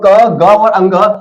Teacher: अब मैंने कहा क वायु कम निकली, ख वायु अधिक, मैंने बोला ग वायु कम, घ वायु अधिक, फिर अंग वायु कम। यानी जब मैं बोलता हूं क ग और अंग, इनमें वायु कम निकलती है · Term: अल्पप्राण